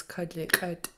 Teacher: you have a pinched T at the end, which means you're going to snap your T